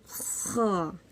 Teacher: जो ऊपर वाला हिस्सा होता है जो जबान के करीब होता है वहां से ख अदा होता है